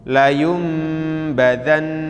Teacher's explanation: nun sukun atau tanwin bertemu dengan huruf ba maka dibaca bunyi n berubah menjadi m dan di situ ada tandanya mim-nya seperti tongkat kakek mimnya seperti